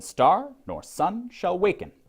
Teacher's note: the prevailing pattern stress is unstressed stressed unstressed stressed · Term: iambic trimeter